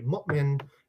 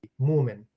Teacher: The Hamza is what linguists call a glottal stop